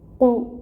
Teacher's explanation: قاف حروف مستعلیہ میں سے ہے، اس کو پر کر کے پڑھا جائے گا۔ اس کے اوپر پیش کی ایک حرکت ہے، یہاں پہ 1 کاؤنٹ پڑھیں گے